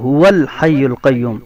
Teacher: یہ جب ہو کے واو کو اس کے ساتھ ملائیں گے تو یہ حمزہ گر جائے گا، اس لیے کہ یہ حمزہ وصلی ہے جو درمیانے کلام میں گر جاتا ہے۔